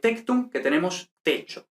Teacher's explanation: Entonces, como siempre, perdemos la M final, la UB final se abre en O y luego el grupo CT, como ya sabemos, se convierte en che